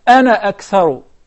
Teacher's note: we will not prolong the alif as long as we're connecting the word, the ana, to the next word.